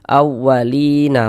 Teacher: Sebelum ya sukun ada ini nih, ada harokat kasrah, maka huruf yang memiliki harokat kasrah ini dibaca panjang. Sehingga li dibaca panjang. Mad tabi'i panjang 2 harokat.